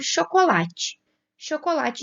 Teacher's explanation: Então, começando por chocolate. Chocolate, a gente já tinha visto que o lá é a sílaba tônica.